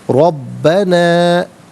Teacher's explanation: را پر زبر ہے، را کو پر کر کے پڑھا جائے گا. زبر یا پیش ہو تو پر پڑھتے ہیں، زیر ہو تو باریک کر کے پڑھیں گے.